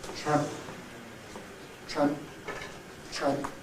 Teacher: in English we don't have the expectation of releasing the P audibly, because the presence of it is already shown by clipping, tramp. And if we don't have clipping, tran, and there's no clipping of and, no clipping of nasal, then there is no P.